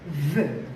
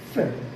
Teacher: V v is voiced. F is voiceless. If you put your fingers or your hand here and pronounce V, [Music] you will feel some vibration here.